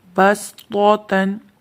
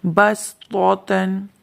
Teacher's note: اس کلمے میں بھی سین کی آواز پیدا کرنی ہے، صاد کی آواز پیدا نہیں کرنی